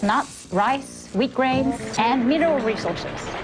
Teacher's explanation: when listing things a rise falling tone is used